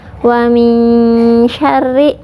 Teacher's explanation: Makhraj huruf shin dari tengah lidah mendekati langit-langit. Ya, jadi tidak ming ya, seperti ada huruf y-nya. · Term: ikhfa hakiki